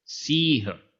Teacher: अब यहां जो छोटा ई की मात्रा थी वो दीर्घ हो गई